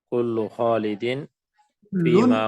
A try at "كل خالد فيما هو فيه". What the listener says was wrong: لام کو تنوین دے دیں وفي لفظ كل خالد فيما هو فيه.